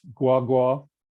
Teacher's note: to express an approximate location with a 3/3 tone on both syllables